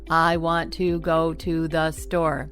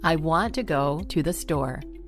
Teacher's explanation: Do you notice that want, go, and store are the stressed words? And the smaller words like to and the, which are less important words, are reduced. · the smaller words like to and the, which are less important words, are reduced. They're shortened, and they're spoken a little bit more softly.